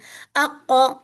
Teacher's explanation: میری ٹنگ پیچھے سے جا کے اوپر کے سافٹ پیلٹ سے لگ رہی ہے